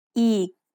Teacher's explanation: Did you notice the tone when I say eek? It's a low tone.